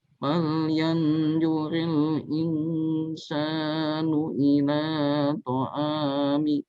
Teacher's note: Insan itu ikhfanya ditahan.